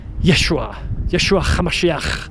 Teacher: So if we were to be transported, we went back in time 2,000 years, you would hear his followers call them Yeshua Hamashiach, with a ch sound. You have to add a little bit of a throaty little ch.